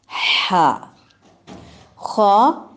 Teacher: خا ادنی الحلق ہے، جہاں سے گردن شروع ہوتی ہے اور منہ ختم ہوتا ہے · ہا وسط الحلق سے، جہاں پہ گردن کا درمیانی حصہ ہے، جہاں ایک تھوڑی سی سخت ہڈی نما ہے جو مردوں کی زیادہ ابھری ہوئی ہے اور عورتوں کی قدرے کم.